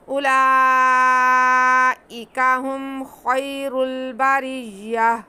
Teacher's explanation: اینڈ میں ہم نے گول تا پہ وقف کرنا ہے تو اسے ہم نے ہا میں بدل کے ساکن کر دینا